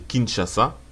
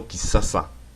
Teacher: Il faut savoir que le son SH devient souvent le son S.